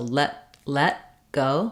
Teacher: the way we say the T in let go is that we don't release it so I don't say let go with a burst of air